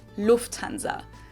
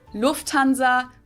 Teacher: So the emphasis is on the first syllable